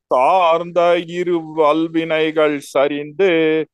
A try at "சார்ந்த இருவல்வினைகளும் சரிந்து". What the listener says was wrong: வல்வினைகள் வல்வினைகளும்னு சொல்லணும் உம்மு சொல்லணும்.